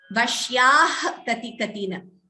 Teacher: If you choose not to pause after vashyaha, we have to pronounce it as a jihva muliya. That is vashyah kati katina.